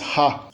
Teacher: Tipicamente as líquidas são a líquida L, que é a líquida lateral, e a rótica, que é uma líquida que tende a ser ou alveolar ou velar, vibrante, uma vibrante apical ou dorsal. Quando ela é inicial ou geminada, ela vira a fricativa glotal do português